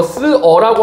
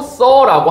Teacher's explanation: 자, 그럼 우리 이거 쓰어라고 하지 않고 써라고 합니다. 여기에서 포인트, 으 플러스 어일 때 결국에는 으가 사라지고 어가 형태를 유지하고 있죠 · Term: 으 탈락